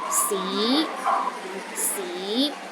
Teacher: The second tone starts with a low pitch and rises to a high pitch.